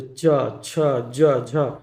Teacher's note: जीभ कर अगला भाग कठोर तालु के छुएला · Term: तालव्य